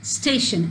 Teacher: When we speak the word station, the stress is on the first syllable